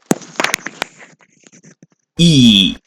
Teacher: it is called as the front close vowel close w means that when you pronounce this your mouth is